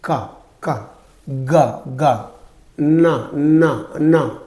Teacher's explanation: produced with the back of the tongue against the soft part of the roof of the mouth